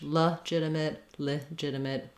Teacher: the jit syllable is stressed